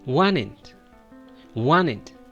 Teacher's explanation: The best pronunciation, you're going to skip the T sound and just give support to the N sound